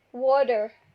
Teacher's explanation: if you listen to Americans what they say water the T is D